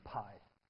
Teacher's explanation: P and B are bilabial sounds because you use both lips.